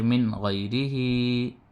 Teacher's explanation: نون ساکن کے بعد حروف حلقی میں سے غین آیا تو نون کی آواز کو ظاہر کر کے بلا غننے کے جلد پڑھیں گے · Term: اظہار